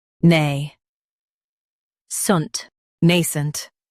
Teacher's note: Emphasize nay and keep sunt light.